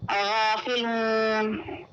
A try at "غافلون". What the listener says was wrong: تھوڑا سا اور غین کے لیے تھوڑا سا آپ اس کی آواز کو موٹا کریے. غافلون کیونکہ غین جو ہے یہ موٹے حرفوں میں آتا ہے. پورا حرف کہتے ہیں اس کو.